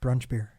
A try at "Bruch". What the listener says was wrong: Yeah, that's another common mispronunciation. they'll switch. They'll switch the the U and the R.